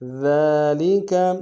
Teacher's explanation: ذال کو باریک ادا کریں گے، ذال کے اوپر کھڑا زبر ہے، ایک انداز میں کھینچیں گے